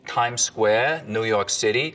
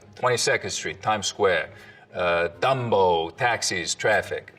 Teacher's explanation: The tongue tip hits the teeth, or close to them, on TD and N sounds instead of, a little further back.